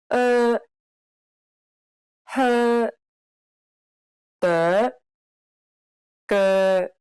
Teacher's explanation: This sound doesn't exist in English, but it's very similar to the U in the word fur. Be sure to compress your lips.